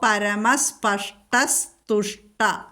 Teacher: വിസർഗത്തിനു ശേഷം ത വന്നാൽ അവിടെ സ ചൊല്ലണം